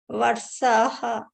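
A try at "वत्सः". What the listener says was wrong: What? Ta should be heard.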